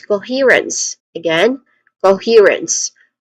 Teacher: and then he, which is the stressed syllable here. It has a long e vowel sound and ends with rens.